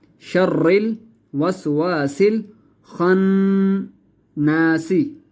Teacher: خا کو ہم نے جب نون کے ساتھ ملایا تو ہم نے غنہ کیا